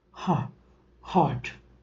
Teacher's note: a glottal, where the air escapes from the two vocal folds with the narrow escape, resulted into production of the sound ha, heart.